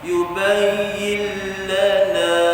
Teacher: Tuan-tuan lihat nun itu asalnya ada tanda mati, tapi dihilangkan tanda mati itu menunjukkan nun tidak boleh dijelaskan bunyi dia, tak boleh diizharkan sebab lepas dia huruf lam, salah satu dari huruf idgham masuk dalam lam itu idgham bila gunnah tanpa dengung, masuk dalam lam tak dengung.